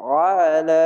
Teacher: খাড়া যাওয়ার এক আলিফ টেনে পড়বেন, আইনটিকে মোটা করে গলা চিপে